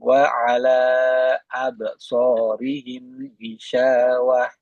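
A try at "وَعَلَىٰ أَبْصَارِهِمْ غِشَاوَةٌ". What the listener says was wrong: Nah, wa ala tadi yang empat atau lima harokatnya masih kurang. Wa ala absarihim ghishawah.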